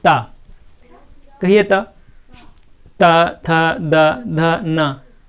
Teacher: कहाँ पर टच हो रही है जीभ, दांतों में टच हो रही है